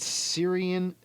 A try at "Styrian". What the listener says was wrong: Styrian? There's a T in there.